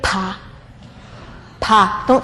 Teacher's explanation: When you say pa, there's 60 milliseconds between p and ah.